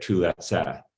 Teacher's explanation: if you add the same aorist and person and number markings to a front vowel root, like tu, you'll get tulatsa with front vowels instead of back vowels